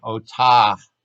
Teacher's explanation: And that actually indicates that if you want to be a really, really careful speaker, you would say otah. And you kind of put that little breathy H at the end of the word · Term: mapik